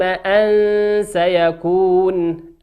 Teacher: وقول ربنا عز وجل علم أن سيكون، أن سيكون، نون ساكنة في كلمة أن، أتى بعدها حرف السين في كلمة سيكون، والسين من حروف الإخفاء، تقرأ أن سيكون كأنه لا توجد نون